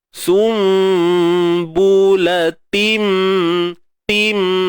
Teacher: Bunyi tanwin tu masuk dalam mim. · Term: idgham